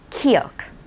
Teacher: kiuk is an aspirated sound of giok. When you say the name Kimberly or the word king, you hear the sound kiuk.